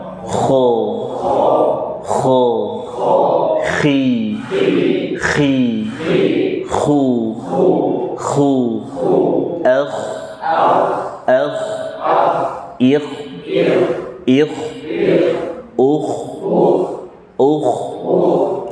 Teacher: Kemudian kho termasuk jajaran huruf-huruf mufakhamah. Mufakhamah itu artinya tebal dalam setiap keadaan, baik fathah, kasroh, dhammah maupun sukun, nggak ada kho tipis. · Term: huruf tebal